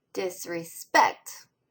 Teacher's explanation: Spect gets the strongest stress. The first syllable has a lighter accent mark.